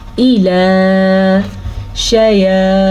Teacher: توا کو پر پڑھیں گے کیونکہ توا ہمیشہ ہی پر پڑھی جاتی ہے. یا کے اوپر کھڑی زبر ہے کھڑی زبر آپ نے لمبی کرنی ہے لیکن شین کے زبر کو آپ نے لمبا نہیں کرنا.